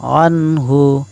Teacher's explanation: নুন সাকিনের পরে হা, ইজাহারে হাকিকি স্পষ্ট করিয়া পড়িতে হয়, হা পেশ হু, আনহু।